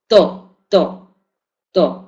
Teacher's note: es oclusivo y es Dental porque la pronunciamos con los eh dientes